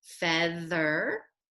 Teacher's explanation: th can also stand for the voiced sound like feather